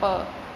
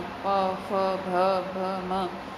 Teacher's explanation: इसी तरह ओष्ठ मतलब जब आपके होंठों से संपर्क होता है, जैसे प, आपके बिल्कुल होंठ में एकदम टकराते हैं आपस में